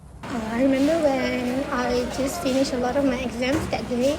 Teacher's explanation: Finished was pronounced without the T at the end, and it is pronounced as finish instead of finished. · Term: elision